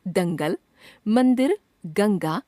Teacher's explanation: अं इसे अनुस्वार कहते हैं। यह नाक से उच्चारित होता है। अनुस्वार का चिन्ह बिंदु होता है।